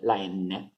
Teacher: Mentre invece la N è dentale, nasale e dentale